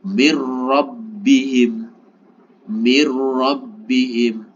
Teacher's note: Nun ini dimasukkan ro seakan-akan tidak ada Nun sukunnya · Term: tanpa disertai dengung